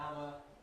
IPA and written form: ˈhæmə (hammer)